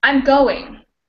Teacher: so we have the stress on go because this is the main verb we're using and even though it has two syllables it's the word stress